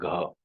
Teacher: it is ka itself when two features are added, the voicing feature as well as the mahaprana feature, it becomes gha